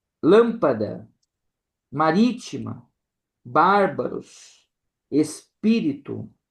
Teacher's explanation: Então, nós temos a tônica, né, na antipenúltima sílaba, dando aí então a conhecer a nossa proparoxítonas, né? · Então nós temos aí a tônica na penúltima sílaba e as proparoxítonas, que nós temos a tônica na antepenúltima sílaba